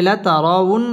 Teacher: লাতারা পুর হবে লাতারাউন, ওয়াও ঠোঁট গোল করে উচ্চারণ করতে হবে।